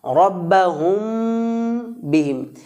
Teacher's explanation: রব্বাহুম বিহিম এখানেও মিম সাকিনের পরে বা বর্ণটি এসছে রব্বাহুম বিহিম এই মিম সেকেন্ডটাকে আমরা বা এর দিকে ইখফা করবো